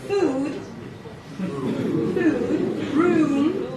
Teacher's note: It's a longer sound, as if we're adding a little W, and there's some kind of a transition there, a little journey that the sound goes through. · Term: tense oo